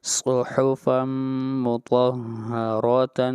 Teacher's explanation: صاد اور طا یہ حروف مستعلیہ میں سے ہیں ان کو موٹا پڑھا جائے گا. اس کے علاوہ را ہے اس کو بھی موٹا پڑھا جائے گا اس لیے کہ را کے اوپر زبر ہے.